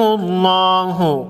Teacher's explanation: لفظ اللہ سے پہلے حرف میم پر پیش ہے، لفظ اللہ کے لام کو موٹا پڑھیں گے